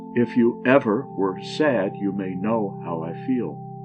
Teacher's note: what is an anapest a foot that has the last syllable accent and the first two not